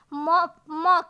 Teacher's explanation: ओट के अतिरिक्त नाक का भी सहायता ली जाती है